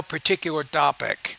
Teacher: You're pronouncing the T kind of like the D.